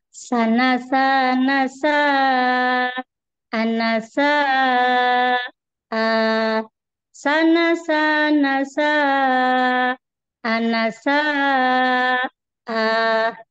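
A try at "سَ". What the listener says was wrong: Masya Allah. Sip.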